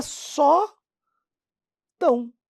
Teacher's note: no final da sílaba o o É pronunciado como u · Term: semivogal